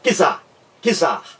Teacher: Quando a gente pronuncia quizar, parece que existe um I entre aqui o C, não é? E o Z. Mas não há esse I. É mera impressão nossa. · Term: encontro consonantal